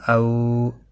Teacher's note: تھوڑا نرمی کے ساتھ آدھے الف کے برابر کھینچا جاتا ہے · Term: حروف لین